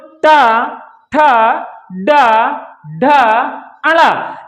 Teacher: तालु के थोड़ा से आगे आकर के दंत से थोड़ा से ऊपर, अर्थात मूर्धा, दंत के थोड़ा से ऊपरी भाग को हमारी जीवा क्या करती है? स्पर्श करती है।